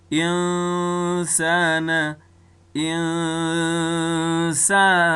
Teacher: نو په دغه اخفا په حالت کې اواز چې دی هغه خیشم ته ځي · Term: غنی اخفا